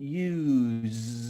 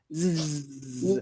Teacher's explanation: Here, used, this S is a soft consonant. Use. It sounds used, like a bee buzzing in your mouth. Zzz. used, Soft.